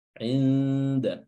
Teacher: Adapun huruf dal karena dia juga berada di ujung seperti dengan makhraj nun atau tanwin, maka kita harus perlu menguatkan ikhfanya. Inda. Ya, karena jangan sampai yang kita lafazkan justru bukan ikhfa, namun huruf nun itu sendiri karena berdekatannya makhraj huruf nun dan huruf dal. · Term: ikhfa aqwah